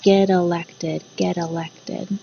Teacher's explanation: these two words actually come together and the t becomes a d sound